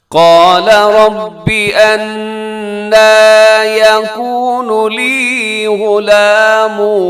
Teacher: جی اس کی تجوید دیکھیے گا، قال اس میں قاف موٹا ہے، لام کی بڑھ زبر ہے، لمبا ہرگز نہ کیجیے گا۔ قال، ربی کو ربے نہیں کرنا آپ نے، انا، یہاں نون مشدد ہے، اس میں غنہ کیجیے گا اور اس کو جب ہم کھینچتے ہیں لمبا کرتے ہیں کوشش کیجیے گا آواز ناک میں نہیں جائے، یعنی انا کر کے پڑھنا یہ درست نہیں ہے۔